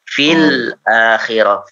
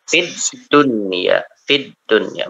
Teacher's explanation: Lamnya hilang. Jadi masuk ke huruf dal langsung ya. Dan tandanya biasanya bertasydid ya. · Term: syamsiyah